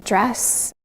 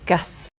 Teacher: Some younger speakers, perhaps more commonly female speakers, have a dress vowel like the RP trap vowel.